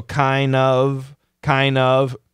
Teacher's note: the N is a strong sound it's going to kill the D